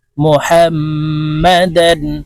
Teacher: ইহা মিমের সাথে গুন্না করতে হবে কারণ হরকতের বামে মিমের উপরে তাসদি আছে